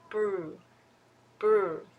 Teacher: I would say the sound of R is smooth that is because the tongue is not touching anywhere